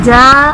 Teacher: جب ہم ہجے کریں گے تو جیم الف زبر جا، یہاں پر الف مدہ کا قاعدہ بنے گا اس لیے اسے صرف 1 الف یعنی 2 حرکات کے برابر ہی کھینچ کر پڑھیں گے